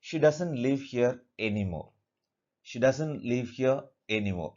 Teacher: They are all ordinary statements which take falling intonation.